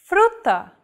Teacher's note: one of these consonants FR focus on the second letter r this Trill sound is done by lightly tapping the gum Ridge behind your upper teeth with the tip of your tongue